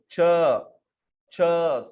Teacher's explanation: तो ये वर्ण उत्पन्न होते हैं आपकी जिह्वा का जो मध्य भाग है, रूट नहीं जिह्वा का, पीछे का भाग नहीं, मध्य भाग, ये जो है ऊपर हमारे मुख के तालु भाग को लग के जब वर्ण उत्पन्न होते हैं तो उसको तालव्य वर्ण कहते हैं।